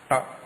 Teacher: നാവിന്റെ അറ്റം ശകലം കൂടി വളഞ്ഞ് മേലോട്ട് പോകും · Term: മൂർധാവ്